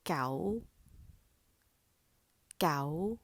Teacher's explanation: the second tone is the high rising tone it starts at a very low pitch and normally rises above the pitch of the first tone